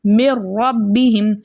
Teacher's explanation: हम इदग़ाम तो करेंगे लेकिन गुन्ना के बग़ैर। मिर रब्बिहिम मिर रब्बिहिम, रॉ मुशद्दद होने की वजह से मजबूती और जमाव के साथ पढ़ा जाएगा। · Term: इदग़ाम बिला गुन्ना